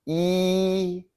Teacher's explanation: It has a flat high first tone.